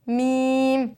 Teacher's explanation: मीम भी दोनों होठों की खुश्की के हिस्से से ही अदा हो रहा है · میم دونوں ہونٹوں کی خشکی کے حصے سے ادا ہوتا ہے۔